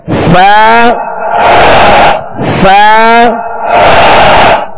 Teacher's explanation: بعض ادا کرتے ہوئے سا کو زبان باہر نکال لیتے ہیں، سا سا زبان باہر آ جاتی ہے، بلکہ اس کا جو مخرج ہے وہ یہ ہے کہ سرا زبان یعنی زبان کا سرا اوپر کے سامنے والے 2 دانتوں کے اندرونی کنارے، اندرونی کنارے، اس سے آپ لگائیں گے تو انشاءاللہ سا ادا ہوگا.